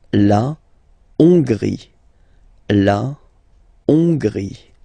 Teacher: H doesn't exist, so you don't pronounce it. So it starts with O-N, on, and then gris, final E, not pronounced.